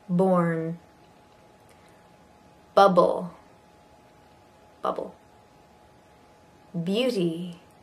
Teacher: this is your lips together and your voice · Okay, this is a voiced b, b, b, similar to p, p.